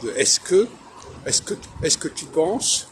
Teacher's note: ce sont deux mots différents qui sont reliés parce qu'on ne prononce pas la voyelle intermédiaire